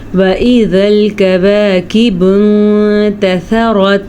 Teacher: پھر سے را پر اور تا باریک، اور سا کو بھی نرمی سے پڑھنا ہے